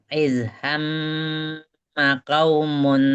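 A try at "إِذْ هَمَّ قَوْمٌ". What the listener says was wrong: ya qafnya jangan kaumun tapi qaumun.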